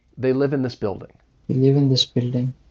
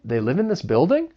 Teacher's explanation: you could really tell a difference between falling and rising intonation